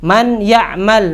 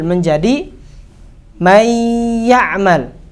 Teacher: Masuk gak huruf ya-nya? Masuk. Tapi ada sifat gunnahnya. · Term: idgham naqis